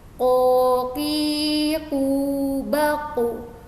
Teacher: qaf ini dia itu karena keluarnya dari pangkal lidah atau lidah bagian belakang, jadi cara pengucapannya dia bukan yang seperti ini misalkan jadi terlalu nyeklek banget gitu ya istilahnya di tenggorokan. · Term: huruf qaf